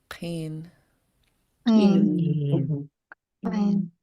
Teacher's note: the underline K is pronounce in the back of your throat